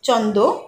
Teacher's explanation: মানুষ ক্রমে এর উচ্চারণ করতে লাগলো চন্দ র ফলা বাদ গেল উচ্চারণ সহজ হয়ে উঠলো